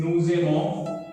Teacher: The first we came across liaison during nuzemo because here s ending and vowel ending becomes z sound. Also, most important part, nuzemo, we are only hearing up to n, the nasal sound, nuzemo.